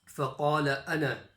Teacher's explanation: Even though it's written with the noon, alif and a fatha, there's going to be no stretch there. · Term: ana rule